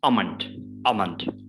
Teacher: we do not pronounce l